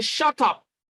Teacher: You express some emotions, all right, using intonation. But then you are using a falling tune in something that sounds like a command, but then you are expressing a powerful emotion at the same time.